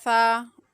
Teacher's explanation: سا کی ادائیگی کرتے ہوئے زبان کا جو سیرا ہوتا ہے وہ اوپر والے دانتوں کے اندرونی کنارے کو جا کر ٹچ کرتا ہے